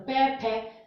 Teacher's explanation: दोनों होठ हमारे मिल रहे हैं तो ये ओष्ठ है